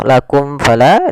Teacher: Karena di sini bertemu fa, maka dinamakan dengan izhar, suara mimnya tidak boleh ditahan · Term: izhar syafawi